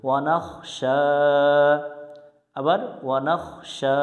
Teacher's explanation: ওয়াও জবর ওয়া, নুন খ জবর নাখ, ওয়ানাখ, শিন খারা জবর শা, শিনের উপর খারা জবর এক আলিফ টানতে হয়